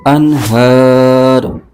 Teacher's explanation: یہاں پر اظہار کا قاعدہ ہو رہا ہے، یہاں پر غنہ نہیں کریں گے · ہا پر کھڑا زبر ہے، اس کو ایک الف کھینچ کے پڑھیں گے، اور را پر پیش ہے اور آگے وقف مطلق کی علامت ہے، یہاں وقف کریں گے تو را کی پیش ختم ہوگی اور یہ را ساکن ہو جائے گا